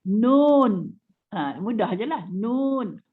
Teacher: Huruf nun disebut dengan menekan hujung lidah terus ke gusi.